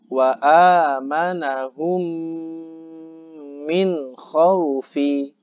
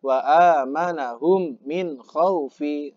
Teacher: Bunyi mim dimasukkan pada huruf mim di depannya seakan-akan huruf tersebut bertasydid ya. Dibaca gunnah dengan mendengungkan suara. Ditahan selama 3 rakaat, nafas keluar dan lupa hitung.